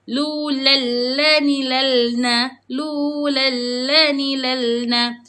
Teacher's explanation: Lu ni lalna dia takkan jadi lulan sebab dia idgkham. Bila mana idgham dia akan jadi lulal.